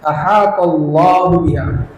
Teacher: Allahu biha, lafaz jalalah dibaca tebal.